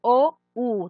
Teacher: Se va hasta atrás. La O y la U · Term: vocales posteriores